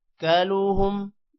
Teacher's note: کاف کے بعد بھی الف ہے، لمبا ہوگا، اور لام کے بعد واو ہے، لام بھی واو کے ساتھ مل کر لمبا ہوگا۔ ہم پر غنہ نہیں کرنا کیونکہ آگے حروف حلقی حمزہ آ رہا ہے۔